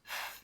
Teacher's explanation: And the second sound TH can make is a th sound. When we make a th sound, your voice is not on. Your throat is not vibrating.